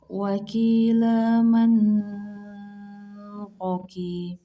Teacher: Cara membacanya dengan berhenti sejenak tanpa bernafas sepanjang 2 harokat. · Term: saktah